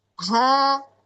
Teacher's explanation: ada aliran nafas yang mengalir secara sempurna karena pita suara terbuka tuh. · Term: hames